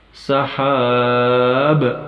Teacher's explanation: حرف با حروف قلقلہ میں سے ہے، یعنی قطب جد میں سے ہے، لہذا اس حرف با پر قلقلہ ہوگا